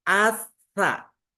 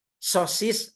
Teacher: Ibu Bapak pengucapannya att ada angin keluar sekarang atsa ujung lidah tempelkan ke ujung gigi ada angin